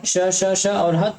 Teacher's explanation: स श श ह के उच्चारण से मुख से गर्म हवा निकलती है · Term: उष्म व्यंजन